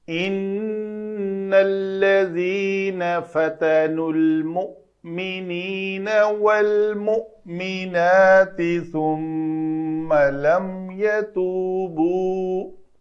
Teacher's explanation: ان نون کے اوپر شد تھا تو میں نے غنہ کیا، ثم میں میم کے اوپر شد تھی تو میں نے غنہ کیا۔ تو یہ دو حروف ہیں تجوید میں، صرف اور صرف حروف تہجی میں، جن کے اوپر جب شد آ جائے تو ہمیں غنہ کرنا ہے۔